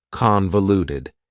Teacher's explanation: convoluted also has four syllables and the stress is on the first syllable convoluted that second syllable again has that schah sound that reduced